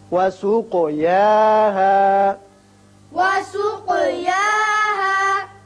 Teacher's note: قاف چونکہ مجزوم ہے اس لیے اس کی صفت قلقلہ ادا کریں گے۔